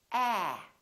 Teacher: your lips are open and your tongue is down and your tongue is tense